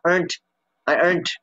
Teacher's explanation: you don't hear much the D sound, you hear the T sound